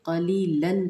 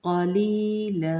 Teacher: تو 2 زبر جو ہوتی ہیں وہ ایک زبر میں وقف کی صورت میں لا پڑھا جاتا ہے، یعنی کہ الف مدہ